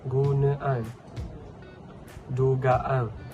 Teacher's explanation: penyisipan hentian glotis dalam sempadan akhiran